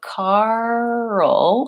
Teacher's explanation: Karl has a dark L at the end so it's almost like two syllables just like girl her Lea has two syllables and there's a